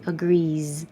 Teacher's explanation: E is voiced. Leave your voice on. And it's a Z.